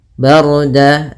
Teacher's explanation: ra-nya tebal yaitu ra takhim karena sebelum ra sukun ada huruf berharakat fathah